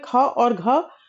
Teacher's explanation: महाप्राण की अगर बात करें तो प्रत्येक वर्ग का दूसरा और चौथा वर्ण जो है, द्वितीय और चतुर्थ वर्ण जो है वह महाप्राण है। द्वितीय और चतुर्थ में देखें क वर्ग में ख और घ वर्ण जो है वह महाप्राण है।